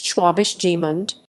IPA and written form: ˈʃvɛːbɪʃ ˈɡmʏnt (Schwäbisch Gmünd)